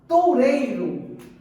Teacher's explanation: Esse U e esse I nessa palavra, eles são mais fracos, porque eles são pronunciados com menos intensidade perto da vogal, porque a vogal é a mais forte. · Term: semivogais